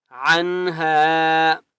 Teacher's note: عین کی آواز حلق سے نکالیں گے